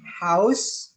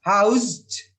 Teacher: contohnya house itu voiceless. Housed ya menjadi kata kerja itu menjadi voiced.